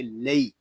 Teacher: یا لین کو ہم کھینچ کر نہیں پڑھیں گے، اس کو لئی یا لے اس طرح نہیں پڑھیں گے، اس کو پڑھیں گے لئی۔